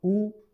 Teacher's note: ओष्ठ मतलब होठ, इनका उपयोग होता है इनके बोलने में, इनका फोल्डिंग होना, होठों का फोल्ड होना